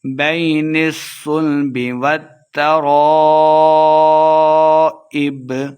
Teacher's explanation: الف مدہ بھی ہے، تو ہم نے اس کو خوب لمبا کر کے پڑھنا ہے، آخر پہ وقف کر دیں گے، بین الصلب والترائب۔